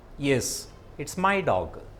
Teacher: This falling tone is used for a statement. Towards the end of the sentence, the tone reaches a lower level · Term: falling intonation